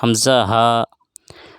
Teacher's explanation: हमज़ा हलक यानी गले के सीने की तरफ वाले हिस्से से अदा होता है